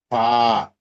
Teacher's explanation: 14 নং মাখরাজ নিচের ঠোঁটের পেট সামনের উপরের 2 দাঁতের আগার সঙ্গে লাগিয়ে